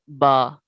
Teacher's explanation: با دونوں ہونٹوں کے تر حصے سے ادا ہوتا ہے